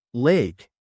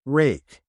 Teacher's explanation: The L and R sounds can be confusing. For the L sound, put the tip of your tongue on the top of your mouth behind your upper teeth. For the R sound, pull your tongue back without touching the top of your mouth.